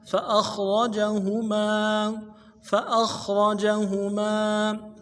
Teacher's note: عنها فأخرجهما، فا کو نرم سے ادا کرنا ہے، حمزہ کو خا کے ساتھ ملانا ہے، خا موٹا کریں گے اور را کو موٹا ادا کریں گے، جیم کو نرم سے ادا کریں گے، ہا کو نرمی سے ادا کریں گے، میم کے بعد الف مدہ ہے، ایک الف دال میں کھینچیں گے۔